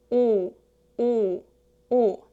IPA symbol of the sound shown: o